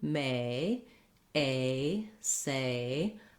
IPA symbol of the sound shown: eɪ